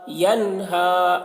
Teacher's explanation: نون میں جلدی کریں گے کیونکہ اظہار ہو رہا ہے